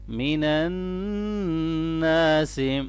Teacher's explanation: نون مشدد ہے، اس کے اوپر غنہ کریں گے اور ساتھ ہی الف مدہ بھی ہے۔ من الناس ما ولاہم، الف مدہ کو بھی لمبا کریں گے اور کھڑی زبر کو بھی لمبا پڑھیں گے۔